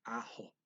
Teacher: And pronounces the K like an H in ako.